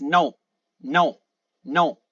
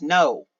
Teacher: Learners have the most difficulty pronouncing from what I've noticed oh it is more pronounced in the back of the throat it's not like the English o where you go no and and it is articulated in the